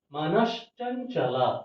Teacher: ಅಂದ್ರೆ ಇಲ್ಲಿ ತಾಲವ್ಯ ಶ ಮಾತ್ರ ಇದೆ. ಹಾಗಾಗಿ ಈ ದಂತ್ಯ ಸಕ್ಕೆ ಬದಲಾಗಿ ತಾಲವ್ಯ ಶ ಆದೇಶವಾಗಿ ಬಂದಿದೆ